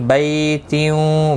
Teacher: بی یا لین ہے، تھوڑا نرمی کے ساتھ کھینچ کر ادا کریں گے